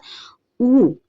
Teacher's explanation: আবার যখন উ স্বরধ্বনিটা আমরা উচ্চারণ করব তখন আমরা দেখতে পাচ্ছি কি জিভের অবস্থান হচ্ছে পশ্চাতে, অর্থাৎ উ, এই উ স্বরধ্বনি উচ্চারণের বেলায় আমাদের জিভ একটু পেছনের দিকে পেছনের দিকে যায় এবং আমাদের জিভের উচ্চতা থেকে উপরের দিকে, অর্থাৎ জিভ উপরে উঠে থাকে, এবং এক্ষেত্রেও আমাদের ঠোঁট সংবৃত থাকে। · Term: উচ্চ পশ্চাৎ সংবৃত স্বরধ্বনি